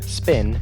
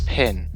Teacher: the aspiration distinction between the p in spin and Pin